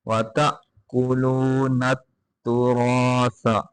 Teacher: الْمِسْكِينِ وَتَأْكُلُونَ التُّرَاثَ یہاں پہ تا کے بعد حمزہ ساکن ہے، جہاں حمزہ ساکن ہو وہاں پہ جھٹکا لگا کے پڑھتے ہیں